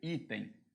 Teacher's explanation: a palavra item é uma palavra paroxítona a sílaba tônica é o i